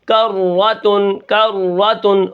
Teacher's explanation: را ہلنے نہ پائے. ٹھیک ہے، را کو ہم بالکل نہیں ہلائیں گے اور اسی طرح اس کے اندر تکرار بھی پیدا نہ ہو